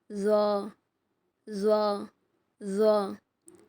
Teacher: உங்க நாக்கு நுனியை மேல் பற்களோட விளிம்புல வச்சு ரொம்ப அடர்த்தியான சவுண்டா ஹெவியா கொடுக்கணும்